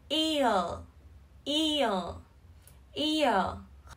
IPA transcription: ɪə